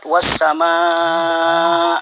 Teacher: Nah, itu bacanya mad wajib muttasil. Cara membacanya itu dipanjangkan 2,5 alif atau 5 harakat.